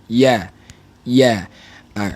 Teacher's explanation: bunyi ya dia lahir daripada Tengah lidah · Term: huruf ya